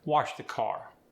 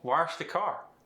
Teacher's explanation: And we can't forget the intrusive R, which we see in other accents from all over the world. Wash becomes wash.